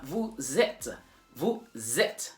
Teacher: join the S from vous with the E of être, and then you have vous êtes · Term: la liaison